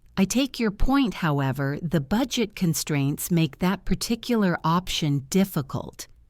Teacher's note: The pause before however and the stress on point are key.